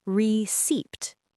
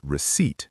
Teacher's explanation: That P is completely silent, invisible, like it was never there.